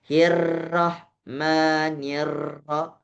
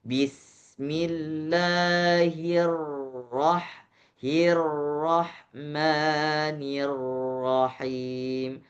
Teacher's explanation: Jadi dalam posisi tebal dia gak ada getarannya.